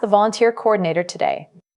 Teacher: Use a slight rising intonation on certificate before the pause. Pronounce the compound noun volunteer coordinator as one continuous unit and emphasize today.